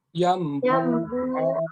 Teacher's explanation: Iklab hanya satu, udah ketemu ba. N-nya berubah jadi em. Nah, bunyi N ke bunyi em.